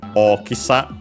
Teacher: Okisa was unacented. So be careful despite Oki being accented.